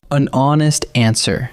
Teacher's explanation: The word honest begins with the letter H, but that H is silent, so honest actually opens with a vowel sound.